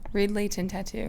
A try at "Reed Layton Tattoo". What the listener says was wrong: I feel like you're pronouncing the T like really hard. Layton. You're saying Layton. Layton.